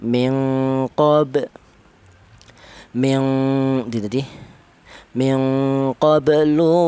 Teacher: dibaca qalqalah suhro ini alasannya ada huruf qalqalah yang mati tidak berupa waqaf ya cara bacanya dipantulkan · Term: qalqalah suhra